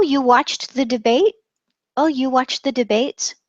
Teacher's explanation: the question, the did, is taken care of by the question tone.